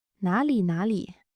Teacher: 哪 It's a third tone, 里 It's a neutral tone.